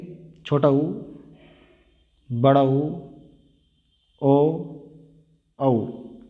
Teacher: वृत्ताकार वो होते हैं जिसमें हमारे होठ यानी कि उच्चारण करते समय हमारे होठ गोलाकार हो जाएं।